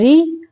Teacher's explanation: जब रा के नीचे ज़ेर आ जाती है वो रा बारीक हो जाती है, उसको मोटा नहीं पढ़ना।